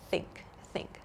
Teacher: in the word think I'm not using my vocal cords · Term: unvoiced th sound